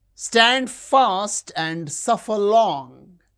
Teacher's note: Stand fast, suffer long. These words are stressed.